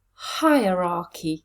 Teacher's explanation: Where is the stress? Hierarchy. Yes, it's at the beginning.